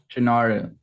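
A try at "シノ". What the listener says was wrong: No, Shino. Shino. There's no R.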